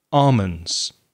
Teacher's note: i don't pronounce the l